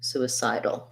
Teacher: second stress on the side